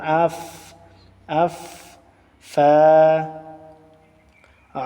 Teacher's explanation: উপরের দাঁতের অগ্রভাগ, নিচের ঠোঁটের বীজা অংশ, এই মাখরাজটিতে ফা উচ্চারিত হয়।